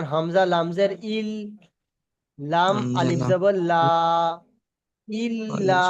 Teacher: ইল্লা এই প্রথমে দেখেন প্রথমে লামের উপর কি আছে তাজদিদ তারপরে হামজা লামের সঙ্গে একবার উচ্চারণ হবে তারপরে লামটা একবার একা একা উচ্চারণ হবে